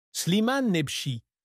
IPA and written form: sliman nɛbʃi (Slimane Nebchi)